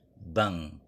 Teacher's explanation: makhraj kedua huruf ini ada di Pangkal lidah yang apabila dua huruf ini yaitu n dan K kita gabungkan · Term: Ikhfa